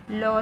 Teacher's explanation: lateral sound is low sound when you pronounce this low sound you can understand how air escapes through the both sides of our tongue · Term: lateral consonant